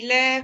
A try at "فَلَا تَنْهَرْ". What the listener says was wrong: நீங்க ஈ ஈ மாறுறீங்க.